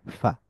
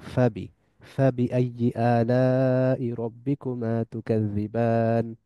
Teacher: Air flows through the small gap between the lip and the teeth. যে ঠোঁট এবং দাঁতের মধ্য দিয়ে যে ছোট গ্যাপ আছে, ওই গ্যাপের মধ্য দিয়ে বাতাস চলাচল করে, যার ফলে উচ্চারিত হয় ফা। ফা এর উচ্চারণ সহজ, কেননা এটা ইংলিশ এফ এর মতো, এবং বাংলা বাংলা না, ঠিক সিলেটি ফ এর মতো।